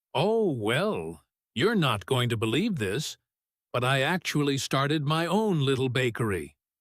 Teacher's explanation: Notice the rise in energy on you're not going to believe this, almost teasing, building anticipation